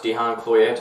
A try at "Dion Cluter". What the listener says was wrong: Like Cluedo. Like the same sound. Clue. Then tar. Clutar. Spelt, as you would say. Cloette. But it's pronounced Cluter. Not Dihan, Dion. Dion as well.